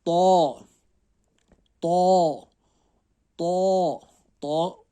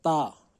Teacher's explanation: تو کو ہمیں موٹا پڑھنا ہے، تا کو پتلا